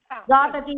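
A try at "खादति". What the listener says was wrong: காததி த சரியா போடணும். காததி காதத காதந்தே காததி காதத காதத காதாமி காதாவஹ காதாமஹ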